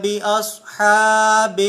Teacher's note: اصحاب کے اندر صاد حروف مستعلیہ میں سے ہے، اسے پر پڑھا جائے گا